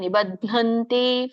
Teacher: ಬ ಒತ್ತಿಲ್ಲ, ಧ ಮಾತ್ರ ಮಹಾಪ್ರಾಣ